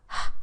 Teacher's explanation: The first sound in house the ha sound is actually produced by making a constriction between the vocal folds. The vocals are close together, but the glottis is not closed and air is pushed through the vocal folds forcefully enough that it makes noisy airflow.